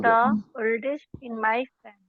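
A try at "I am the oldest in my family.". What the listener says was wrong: it is the oldest, the oldest, the oldest, the oldest. अच्छा रुकना नहीं बेटा, the oldest एक साथ से बोलना है, the oldest. इसको आवाज के तौर पे एक ही मानो.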